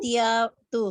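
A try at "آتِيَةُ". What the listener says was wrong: आतियतु, इसको जरा लंबा करना है।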